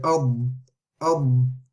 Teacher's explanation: There's no air running through the ad. It stops on the sound itself. And is very strong on the sound.